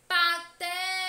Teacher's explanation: Patético. A sílaba té é a mais intensa, é a que demora mais a ser pronunciada.